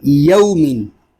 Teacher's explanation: यौमिन, यौमिन इसको यौमिन नहीं पढ़ेंगे क्योंकि हरूफ लीन को बगैर खींचे बगैर झटका दिए नरमी से मारूफ पढ़ेंगे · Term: वाव लीन